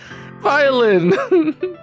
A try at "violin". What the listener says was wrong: No. No. Violin does not end in an L. And it doesn't have a Y in it either. That is not an R at the beginning.